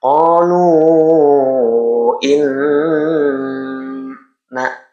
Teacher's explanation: nun bertasdid adalah gunah. Jadi, suaranya didengungkan masuk ke rongga hidung dan ke rongga mulut. fifty-fifty. · Jadi seperti biasa tandanya adalah baris halis ini bertemu dengan alif di lain kalimat. Ini adalah mad jaiz munfasil. Dipanjangkan 2 ayunan 2 alif atau 4 harokat.